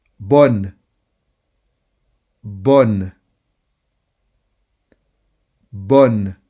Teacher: Focus on the sound O. Bonne. Bonne. Don't make it too nasal.